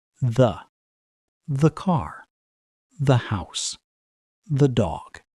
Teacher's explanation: Usually, we use the relaxed schwa sound again